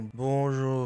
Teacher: 子音，越靠近口腔后面的音，就会慢慢偏向用舌根跟口腔上面接触来发音，像是可就不可能是用舌尖来发音。小舌的音里面最有名的应该就是法文里面的▁R▁音，也就是小舌的擦音，像是你好就念作▁bonjour，▁虽然平常最后的▁R▁不会念那么大声，但 它是气流在小舌的位置摩擦的声音 。另外出现在无声子音旁边或在字尾的时候，也可能念作无声的小舌擦音。然后有的人不是念擦音，而是念小舌颤音。咽部跟会咽的音我比较没有接触到，这里就先不介绍。声门的音里面最简单的就是声门的擦音，其实就是呵气的音，也就是要注意的是它跟国语的呵其实不太一样。英文的▁hello▁其实就是喉咙放松直接念▁hello▁hello，▁不是▁hello，▁气流摩擦的位置不太一样。再来还有一个特别的音，就是声门的涩音，这个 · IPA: /bõʒuʁ/